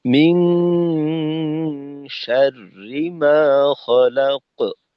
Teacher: قل أعوذ برب الفلق من شر ما خلق আচ্ছা, গুন্নাতে ومن আরো সময় দিতে হবে, গুন্নাতে জি আপনার আরেকটু সময় দেওয়া, এক আলিফের বেশি, দুই আলিফের কাছাকাছি।